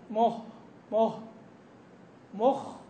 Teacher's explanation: طلع طلع معه هوا طلع مع نفس واضح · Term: الهمس